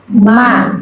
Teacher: Ma perut bibir bagian luar. Jadi ba dengan ma itu sama cara pengucapannya. Bedanya satu perut bibir bagian dalam.